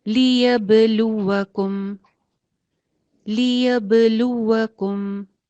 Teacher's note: لام کے اوپر پیش ہے، واو کے آگے اس کے واو ہے، پیش پہ بھی ہونٹ گول ہوں گے، واو پہ بھی ہونٹ گول ہوں گے.